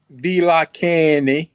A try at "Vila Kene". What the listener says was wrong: You drop the nasal. You dropping the nasal. Vila Kene. Vila Kene.